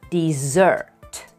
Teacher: the stress is at the end of the word dessert · The stress is on the second syllable